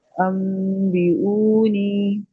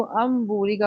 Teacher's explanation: अब इसी तरह से अंगूरी का, अब मैंने इसको अम्बूरी का पढ़ा, हालांकि लिखा अन हुआ है, लेकिन मैंने अम पढ़ा है क्योंकि यहाँ पे नून की आवाज बदल रही है मीम के साथ है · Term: इकलाब